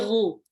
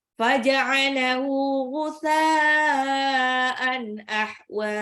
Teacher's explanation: Nah, ini sering salah tuh ghoinnya. Ghoinnya itu bukan gu, tapi ghu. Agak ngorok. Dia satu marot sama kho. Ada di tenggorokan atas.